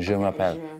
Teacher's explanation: Lips forward, the same as sh, but you also vibrate your throat.